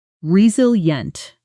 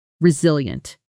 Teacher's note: The stress is clearly on the second syllable.